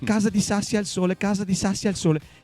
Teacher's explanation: che tutte queste S che c'è dentro, no? Che fa tanto sibilanti.